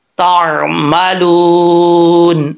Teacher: تعملون، لام واؤ بشلو، واؤ مدہ ہے، ایک الف کی مقدار اس کو لمبا کریں گے۔